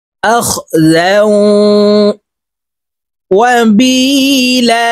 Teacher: তাসদিদ ওয়ালা ওয়ার সাথে গুন্নার সহিত মিলাইয়া পড়ব। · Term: ইদগামে বা গুন্না